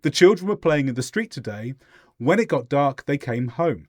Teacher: we have a short pause to represent a sentence break